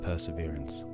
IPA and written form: pəːsɪˈvɪər(ə)ns (perseverance)